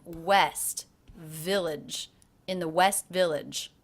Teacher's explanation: West and village both had more time